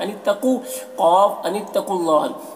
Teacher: क़ाफ को पुर पढ़ना है, हुरूफ मुस्तालिया में से है